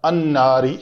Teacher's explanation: یہ اس سے پہلے اگلے الف لام آیا تو وہ الف لام چونکہ نون جو ہے وہ حروف شمسی ہے، تو حروف شمسی سے پہلے اگر الف لام کا اضافہ کریں تو اس لام کا اس نون کے اندر ادغام ہو جاتا ہے، تو یہ لفظ بنا ہمارا الناری.